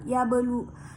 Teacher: Di situ ya terdapat basukun asli. Ketika dibaca huruf ba itu sukun harus dipantulkan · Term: qalqalah sugrah